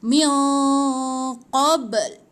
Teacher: Ba bila mati tu ada bunyi pantulan tu sikit.